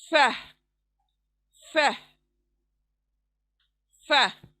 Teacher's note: ऊपर के दांत और नीचे होठों का गीला हिस्सा